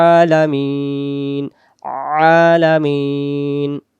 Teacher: হামজা জবর আ, হলকের প্রথম থেকে আ, আর আইন অক্ষর হলকের অর্থাৎ গলার মাঝখান থেকে একটু চেপে পড়তে হবে